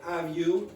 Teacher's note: Italians very often say have you, so they take off the H.